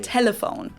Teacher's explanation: a light L that is more pronounced with the tip of your tongue as in telephone